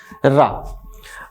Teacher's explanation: रा बोलिए तो जीभ आपकी थर्रा उठती है, कांप उठती है, तो र। और कुछ भाषा वैज्ञानिक कहते हैं कि बेलन जैसी लपेट जाती है, इसलिए इसे लुंठित या प्रकंपित कहते हैं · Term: लुंठित या प्रकंपित वर्ण